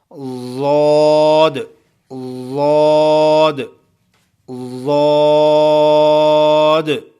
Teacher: مخرج نمبر 8، زبان کا وہ حافہ جو گالوں میں چھپا ہوا ہوتا ہے، اوپر والی 5 ڈاڑوں سے لگتا ہے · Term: حافیہ